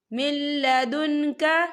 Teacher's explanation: لام جو ہے حروف یرملون میں سے ہے تو یہاں پر ادغام ہوگا، ہم اسے بنا غننے کے پڑھیں گے